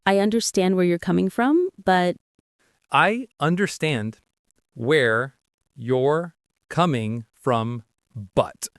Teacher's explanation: Stresses on stand in understand, come in coming, and but. The coming from often sounds very linked together.